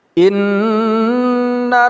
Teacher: nun yang berharakat tasydid kita gunnahkan atau kita dengungkan